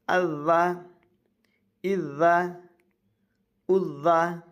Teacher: ذال میں ہمیشہ زبان نکلے گی، نہیں تو پھر زا ہو جائے گا